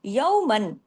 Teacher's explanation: اخفا حقیقی غنہ کاملہ، اور واو لین ہے، یومن آواز تھوڑی ناک میں گئی